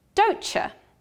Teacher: the final consonant of don't, t, and the initial semi-vowel y of the next word you are pronounced together as ch